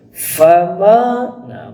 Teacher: Ma di sini dibaca panjang Ma Ya itu adalah dua harkat atau dua ketukan